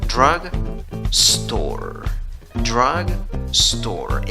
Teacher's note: En la primera sílaba, en la escritura tienes una U, en la pronunciación tienes schwa, la que no es ni A, ni E, ni O.